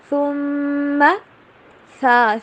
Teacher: ثا کو ادا کرتے ہوئے آپ نے زبان کی نوک کو جو اوپر والے سامنے والے دانت ہیں دو، ان سے باہر رکھنا تھوڑا سا ایسے۔